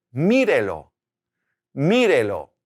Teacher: keeping the stress on the i putting that accent there